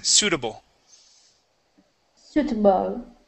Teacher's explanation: suitable with the stress at the beginning